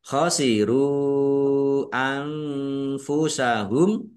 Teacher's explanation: khosiru anfusahum rumah wawu sukun mad thobi'i. Tetapi karena bertemu dengan huruf alif di kata yang berbeda maka menjadi mad jaiz munfasil dibaca panjang boleh lima boleh dua harakat